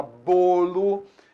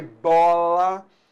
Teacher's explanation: Então bolo, o timbre é fechado. Bola, o timbre é aberto.